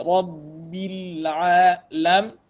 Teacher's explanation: Ra tafkhim, ra tebal, dan ba bertasydid.